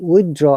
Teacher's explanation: in withdrawal r is pronounced because there is a vowel sound after r